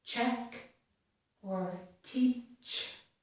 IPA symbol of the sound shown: tʃ